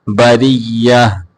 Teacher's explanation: بریہ یا کے اوپر تشدید ہے، اس کو دو بار پڑھیں گے ، بریہ، جزاؤہم، اس کو اوہم لمبا کر کے نہیں پڑھیں